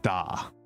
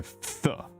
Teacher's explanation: a lot of very distinct D sounds, where an American English speaker would be making a th